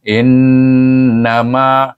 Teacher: kita jumpa satu hukum yang perlu didengungkan pada nun bertasdir